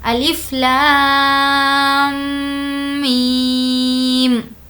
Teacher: اب یہاں پر لام پر مد ہے تو ہم اس کو کھینچیں گے لام، اور ساتھ میں یہاں پر میم بھی ہے، میم پر جو کہ تشدید ہے، تو اب ہم لام کو کھینچتے ہوئے اس میں میم کو ملا لیں گے، لام، اس طریقے سے، اور میم پر تشدید ہونے کی وجہ سے غنہ بھی کریں گے